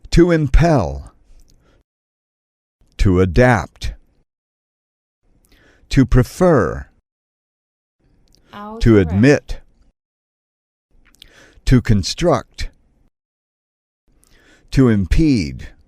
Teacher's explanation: verbs of two syllables the stress is on the second syllable